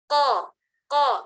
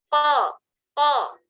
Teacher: qaf karena ke dalam menjadi tebal, terangkat pangkal lidah kita, dan kaf karena dia keluar tidak terangkat pangkal lidah sehingga dia menjadi huruf tipis. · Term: huruf qaf